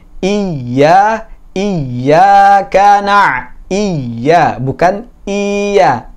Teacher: Hamzahnya nggak boleh panjang ya. Dia cuma satu harokat dan ya-nya sedikit ada kayak penekanan gitu ya.